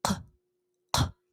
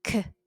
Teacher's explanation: But the qa is produced from the back of your throat. You can feel the base of your tongue elevated against the soft palate. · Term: qaf